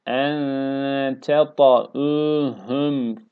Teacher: Buradaki hemze, ayin değil. Hemze olarak telaffuz edeceğiz.